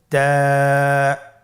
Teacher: জিহ্বার আগা সামনের উপরের দুই দাঁতের গোড়ার সঙ্গে লাগিয়ে উচ্চারিত হয়